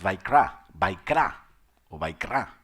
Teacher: vaikra, con B labiodental